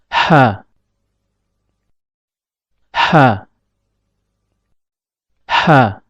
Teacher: Huruf ha keluar dari tengah tenggorokan. Perlu diperhatikan bahwasanya tatkala mengucapkan huruf ha, epiglotis agak sedikit mundur ke belakang.